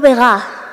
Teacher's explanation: en la parte central de Asturias también perdemos esta D intervocálica